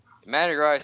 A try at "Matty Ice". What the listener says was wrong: Matty Rice? You mean Matty Ice? It sounded like you said Matty Rice.